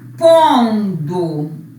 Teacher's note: Para que serviu o N? Para nasalizar o O.